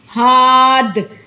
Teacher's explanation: دال پر قلقلہ ہوگا اور ہم نے اس کو ساکن کر دیا ہے